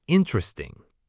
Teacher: Many learners say interesting, stressing the third syllable. But in natural English speech, the stress is on the first syllable, interesting.